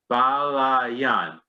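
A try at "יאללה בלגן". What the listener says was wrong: Balagan with a G. Balagan.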